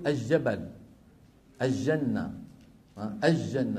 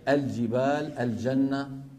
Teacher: لام التعريف عند الجيم خاصة عند أمثالنا أهل الشام العامة غالبا بيجيبوها شمسية